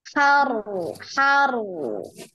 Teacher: jadi harus ada getarannya ya. Harus ada getarannya ro.